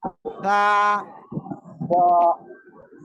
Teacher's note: জিহ্বার আগা সামনের উপরের দুই দাঁতের আগার সাথে লাগিয়ে হালকা বাতাস বের করে উচ্চারণ করব। · জিব্বার আগায় দুই দাঁতের আগায় লাগান, লাগিয়ে উচ্চারণ করেন। সা, মাশাআল্লাহ মাশাআল্লাহ।